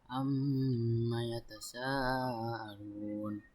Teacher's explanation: Karena huruf mim bertasdid, jadi dibaca dengan dengung selama tiga harakat. Yang kedua yaitu mad wajib muttasil karena huruf mad bertemu dengan hamzah. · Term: gunah